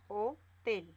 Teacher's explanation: Separamos en sílabas. Hotel. La mayor fuerza de voz está en tel.